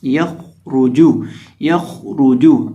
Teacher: خا کو اور را کو دونوں کو موٹا کریں گے، اور را اور جیم کو ہونٹوں کو گول کر کے پڑھیں گے